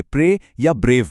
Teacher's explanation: एक ही सिलेबल में 2 vowel sounds मिलकर एक हो जाती हैं और आवाज एक से शुरू होकर दूसरे की तरफ ग्लाइड करती है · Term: दोहरी ध्वनि